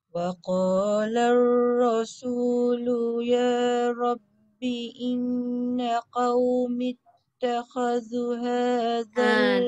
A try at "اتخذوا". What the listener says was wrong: Takhazu panjang. 2 harakat.